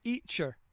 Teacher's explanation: they don't pronounce the T